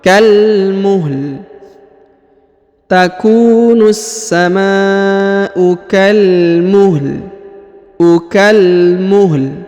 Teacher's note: huruf lam dibaca tipis atau suara rendah